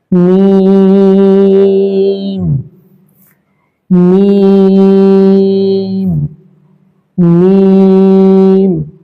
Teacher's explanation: মিম হরফটা 2 ঠোঁটের শুকনো জায়গা থেকে উচ্চারিত হবে এবং এটা 3 আলিফ টান দিয়ে পড়তে হবে।